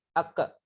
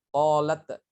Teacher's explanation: Kalau qalqalah itu tidak ada hembusan nafas.